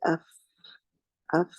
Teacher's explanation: teeth are touching the lower lip the rest of the sound is running from the from the edges from the middle from the sides